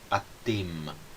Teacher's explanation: no plural no hebraico ocorre a nasalização das terminações